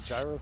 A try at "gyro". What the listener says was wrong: It's Euro. The G is silent.